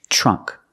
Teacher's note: we see the TR making the CH sound